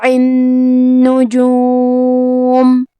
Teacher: کلمت النجوم میں حرف نون پہ تشدید ہے، لہذا 2 حرف کے برابر نون کو پڑھنا ہے کیونکہ تشدید کی اصلیت 2 حرف ہے.